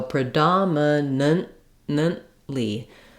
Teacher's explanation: The way I mark this unreleased T in my speech is by making this second N sound short.